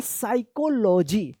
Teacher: पी यहाँ पे जो है ना साइलेंट रहेगा, इसका सही उच्चारण होगा साइकोलॉजी।